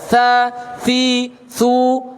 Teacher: tha disertai angin yang keluar. Berbeda dengan wa dengan dal. Yang keluar angin hanya tha-nya saja.